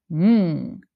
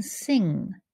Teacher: So instead of lifting up the front of your tongue, N, to say the N sound, N, you lift up the back of your tongue to close off your throat. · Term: ng sound